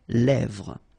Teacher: this E accent grave here, it gives you the E, really open sound